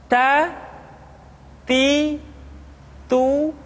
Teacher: lidah kita dengan gusi gusi gigi seri bagian atas ta kemudian huruf ta ketika diucapkan terdengar ada nafas yang mengalir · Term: sifat alhamas